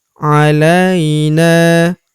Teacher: huruf na kita panjangkan 2 harokat karena terdapat tanda alif di depannya